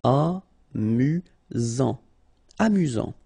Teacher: Final T not pronounced. You've got only one S here between the vowels, so it's really this Z sound.